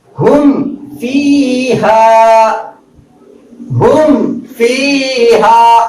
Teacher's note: میم ساکن کو ظاہر کر کے پڑھیں گے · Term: اظہار شفوی